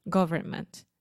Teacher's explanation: I'm saying you don't need to pronounce the N.